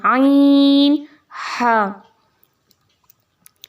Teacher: जब आप इनको अदा करते हैं तो हलक के दरमियान वाले हिस्से से अदा करते हैं, आइन हा। जब हा अदा होता है तो आपको हवा निकलती हुई महसूस होती है अपने मुंह से, ठीक है।